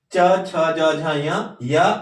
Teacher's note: इसका उच्चारण स्थान तालु है, इसलिए इसे तालव्य वर्ण भी कहा जाता है।